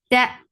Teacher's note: ta is sharp and it is attached with the shidda letter, so the sound will be cut off abruptly.